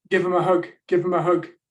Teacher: give and hug they're both content words so you can hear them relatively clearly the function wears in between tend to get reduced uh finish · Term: weak forms